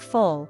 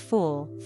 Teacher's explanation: In full, the vowel is short, similar to the Spanish u in nulo. But fool has a longer, more rounded oo sound